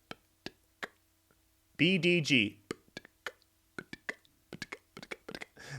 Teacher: the B is on the lips, the D is on the tip of the tongue in the front, and then the G is on the back of the tongue towards the back of your mouth.